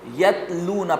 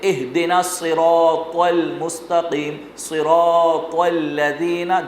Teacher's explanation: تا کی آواز باریک اور بغیر جھٹکے والی ہوتی ہے، تو کی آواز موٹی اور جھٹکے والی ہوتی ہے